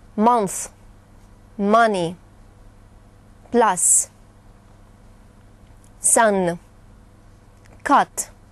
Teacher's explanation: внимание что аналогичного звука строго говоря в русском языке нет это звук безусловно напоминающий русский звук а Но более открытый и более отрывистый